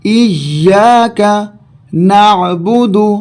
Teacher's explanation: تشدید کا ہم نے قاعدہ پڑھا کہ حرف پہ ٹھہر کر اور زور دے کے ادا کیا جائے گا. ایاک نعبد عین ہے لہذا حلق سے نکالا جائے گا